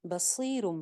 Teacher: صاد موٹا ہے, زیر کے ساتھ ہے, بہت موٹا نہیں ہے, نارمل سا موٹا پڑھیں گے. بصیرن تھا, بصیرن, تنوین کے بعد آ گئی ہے با, با جب آ جاتی ہے نون ساکن یا تنوین کے بعد تو کیا ہوتا ہے, نون کی آواز میم میں چینج ہو جاتی ہے.